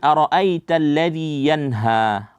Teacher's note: Ra itu dibaca tebal, tafkhim.